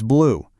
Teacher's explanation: if you pushed your lips together into a little circle and guessed the OO sound, you nailed it